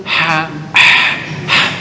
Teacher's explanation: Penekanan di ha itu tengah tenggorokan.